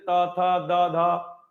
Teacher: और जिन वर्णों को बोलते समय जैसे त थ द ध बोलते हैं तो जीभ पीछे दांतों से स्पर्श करती है, इसीलिए इनको हम दंत कहते हैं।